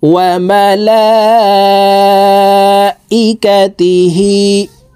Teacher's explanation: উপরে মোটা চিহ্ন বামে হামজা মধ্যে মুত্তাসিল চার আলিফ পড়িতে হয় তো আমরা এই লামকে চার আলিফ টেনে পড়বো